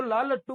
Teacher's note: तो हमारी जो जीभ होती है, जीभ के अगल बगल से हवा निकलती है, इसीलिए उसका नाम पार्श्विक है।